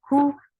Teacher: for dhamma, circle your lips. The sound is short.